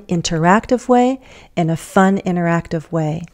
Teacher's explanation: We could say interactive, but I can also drop that T.